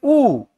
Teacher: तो उ और उ के उच्चारण के लिए आपको क्या करना पड़ेगा? ओष्ठ का या होठों का सहारा लेना पड़ेगा।